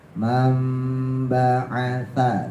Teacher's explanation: sa-nya ujung lidah keluarin, tempelin ke gigi atas